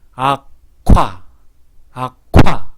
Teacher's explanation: 바람이 갑자기 팍 터지면서 침이 튀어나오죠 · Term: 격음화